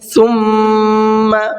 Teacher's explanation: میم پر بھی تشدید ہے تو اس میں بھی غنہ کریں گے